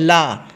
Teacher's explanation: ला जो होता है वो पार्श्विक व्यंजन होता है, जिसके उच्चारण में होती है हवा जीभ के पार्श्व यानी कि बगल से निकलती हुई आ जाती है।